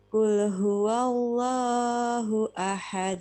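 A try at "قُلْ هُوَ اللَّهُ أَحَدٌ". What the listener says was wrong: Kepanjangan. Allahnya kepanjangan. Jadi dijaga yang 2 ketuk ya 2 ketuk. Biasakan begitu. Karena kadang terbawa lagu kita masing-masing. Wallahu itu kepanjangan. Huwallahu, huwallahu. Hanya diayun. Huwallahu ahad. Huwallahu. Langsung ya.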